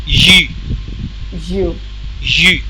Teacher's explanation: rounded lips, and then pushing tongue forward while saying the word, the letter